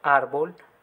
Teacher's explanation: en la palabra que tenemos acá, árbol, la fuerza recae en la sílaba ar · La palabra árbol es grave, tiene su acentuación en su penúltima sílaba